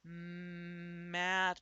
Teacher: my mouth my lips are pressed together